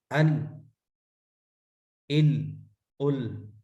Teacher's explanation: لام کو ادا کرتے ہیں تو لام کے مخرج میں ادا ہوتا ہے، اور اس کا لاسٹ جو ہوتا ہے وہ را کے مخرج سے ادا ہو جاتا ہے. اسی طرح را کو جب پڑھتے ہیں تو سٹارٹنگ را کے مخرج سے ہوتی ہے، اور اس کا جو ہوتا ہے لاسٹ وہ لام کے مخرج سے نکلتا ہے. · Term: انحراف